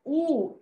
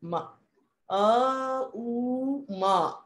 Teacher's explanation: the lips don't even touch